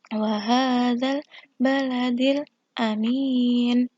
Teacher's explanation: Kemudian ada mad aridil sukun. Kasroh bertemu dengan ya sukun diikuti waqaf. Membacanya panjang 2 harokat.